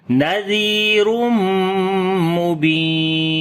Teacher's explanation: Nadi, Zal we read in soft sound and also we long due to Yamadda. On the Mim there is Shad sign, we make Gunna, and also we say Idgham with Gunna.